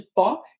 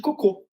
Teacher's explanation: Essas são as três vogais no português que você não consegue falar sem fazer bico. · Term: vogais arredondadas